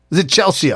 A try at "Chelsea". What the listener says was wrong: Just Chelsea. You're probably trying to overpronounce the letters because Chelsea is spelled with EA at the end.